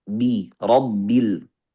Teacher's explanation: Ini kita punya dua ba, sukun dan berharakat. Harus dua-duanya jahar. Rabbil sampai ujungnya bi bukan pi, bi, rabbil.